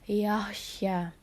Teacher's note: termasuk Mad Thobi'i karena ada huruf Sin berharokat fathah bertemu dengan huruf alif cara membacanya yaitu dengan dibaca panjang dua harokat